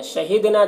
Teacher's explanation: دال میں قلقلہ ہوگا، نون میں الف مدہ ہے، ایک الف کے برابر کھینچیں گے